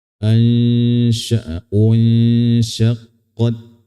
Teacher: Huruf ta sukun ini harus dijelaskan bunyinya ada aliran nafasnya ya. Disebabkan karena membenturnya lidah ujungnya ke gusi ya.